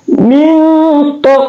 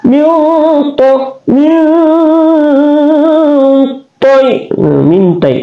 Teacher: Di sini ada mim berbaris di bawah, mim, nun sukun bertemu dengan to, berarti ini adalah ikhfa hakiki, dibaca dengun atau dibaca seperti bunyi ng, dipanjangkan seperti 2 atau 3 harakat.